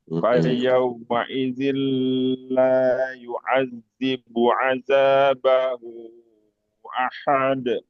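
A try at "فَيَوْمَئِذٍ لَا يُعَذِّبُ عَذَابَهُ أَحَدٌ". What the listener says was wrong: Nah, begitu bagus.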